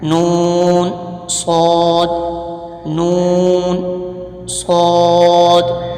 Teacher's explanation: صاد کا مخرج صاد اور سین کا مخرج ایک ہی ہے، یعنی جس مخرج سے سین ادا ہوتا ہے اسی مخرج سے صاد بھی ادا ہوتا ہے، یعنی کہ زبان کی نوک اور دونوں دانتوں کے اندرونی کنارے سے صاد ادا ہوتا ہے